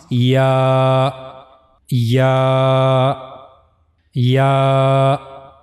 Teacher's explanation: The origin of these two letters is middle of the tongue will touch to roof of the mouth. This is the middle part of the tongue and it will go touch roof of the mouth.